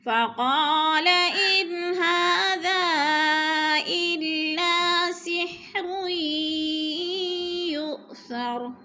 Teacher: ان پہ اظہار ہو رہا ہے، نون ساکن کے بعد ہا حروف حلقے میں سے ہے تو ادھر اظہار ہوگا، اخفا نہیں ہوگا. ہاذا پہ مد منفصل ہے، 4 الف مد ہے، 4 الف کے برابر ہم نے اس کو کھینچ کر پڑھنا ہے